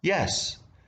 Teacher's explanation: Answering with a rising tone is similar to What do you want?